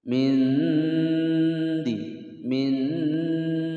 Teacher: Nun sukun bertemu dal, disamarkan disertai dengungan. Suara nun sukun ini masih terlihat ketika mendengungkan. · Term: ikhfa aqrab